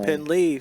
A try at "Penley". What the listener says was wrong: It's Pen, not Pin. It's E instead of I. Penley.